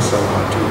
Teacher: the long vowel is in the second part